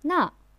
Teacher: That is 那, also the fourth tone.